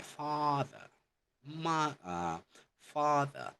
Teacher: the A, for example, in father is pronounced at the back of the mouth with an open throat, like an R.